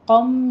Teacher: قم میں قوف کو پر پڑھتے ہوئے آگے ادغام الغنہ کریں گے، 2 کاؤنٹ کرنا ہے